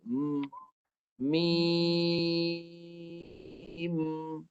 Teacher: Lepas tu dah cukup 6, bibir rapat, tekan kat hidung. Itu sifat gunnah tu kat hidung kena tekan sikit.